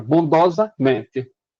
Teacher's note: fazendo como se fossem 2 acentos. Está vendo aqui que está marcado com 2 acentos tônicos?